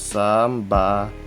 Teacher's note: Next is letter Z. It is just pronounced as letter S, but with a vibrating sound